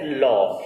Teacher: जब हम ल का उच्चारण करते हैं तो ल को बोलते समय ही जीभ हमारी जो ऊपर वाले दांत होते हैं इनके मसूड़ों को टच कर देती है और वहां पर आगे खड़ी हो जाती है, प्राण वायु को बाहर नहीं निकलने देती है। · ऐसा व्यंजन जिसका उच्चारण करते समय जीभ आपकी आगे से खड़ी हो जाती है, जो प्राण वायु हमारे फेफड़ों से आ रही थी उसको रोक देती है, फिर जो प्राण वायु होती है ध्यान देना वो जीभ के जो है अगल बगल से यानी कि बगल वाले हिस्से से बाहर निकलती है, तो इसी को पार्श्विक व्यंजन कहा जाता है।